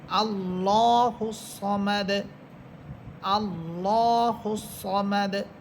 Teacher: এখানে লাস্ট হরফ হচ্ছে দাল, আমরা যখন থামবো তখন দাল হরফ এটা সাকিন হয়ে যাবে, অর্থাৎ দাল হরফের উপরে আছে পেশ, পেশটা এটা সাকিন হয়ে যাবে।